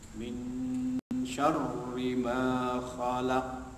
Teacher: seolah-olah tersembunyi bunyi asal nun mati dan bacaannya dengung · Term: ikhfa dan dengung